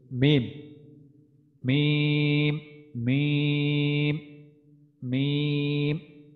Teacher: দুই ঠোঁটের মাঝখান থেকে যেটা উচ্চারিত হয় সেটা হচ্ছে মিম